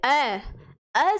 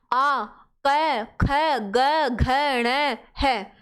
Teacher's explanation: अ जब हम बोलते हैं तो वो कंठ से बोला जाता है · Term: कंठेय वर्ण